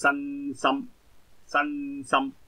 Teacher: 咁你个尾音咧系轻啲嘅，就鼻尾音系轻少少